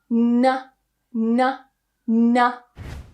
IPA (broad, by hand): n